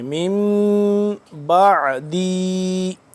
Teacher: میم ساکن کے بعد جب با آ جائے تو اس کو ہم کیا کریں گے، اخفا کریں گے